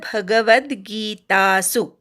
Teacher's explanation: खूप जण भ वर आघात घेतात, तो घेऊ नका. व वर आघात घ्यायचा, वद असा उच्चार करायचा. गीता मधला गी दीर्घ आहे.